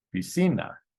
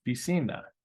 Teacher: Three vowels, three syllables, piscina, and ends in an A, ends in a vowel. So the natural stress is on the second to last syllable, piscina. And if we try the others, it's not piscina on the first I, and it's not piscina on the final A.